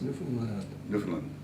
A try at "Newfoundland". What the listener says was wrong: You're not supposed to accent any one of the three.